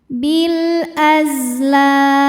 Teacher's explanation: Huruf zai punya sifat yang tidak memiliki lawan. Namanya sifat shofir artinya berdesis. sama seperti suara tebah ya. · Maka ini lam sukun kita bunyikan dengan jelas atau disebut dengan idhar qamari. Bil az, huruf zai punya sifat yang tidak memiliki lawan, namanya sifat sofir, artinya berdesis, sama seperti suara lebah ya. Jadi ini sama seperti sin, kemudian sama seperti shad punya sofir.